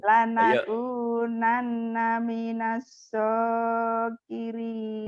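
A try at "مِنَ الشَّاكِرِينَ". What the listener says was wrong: Minasogirin, minasyakirin, shin. Syakirin. Lanakunanna minasyakirin.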